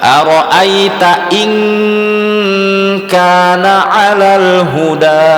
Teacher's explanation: itu qafnya dibentuk, n-nya dibentuk eng, betul-betul eng · Ara'aita in, selain ditahan dia dilafazkan membentuk huruf eng.